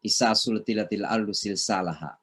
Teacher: Bagi kita di Sulawesi Selatan ya biasanya susah membedakan suara S. Jadi semuanya cenderung sa semuanya.